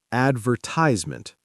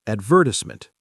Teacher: stress on the second syllable, four syllables instead of five. · American, advertisement, stress on the first and third syllables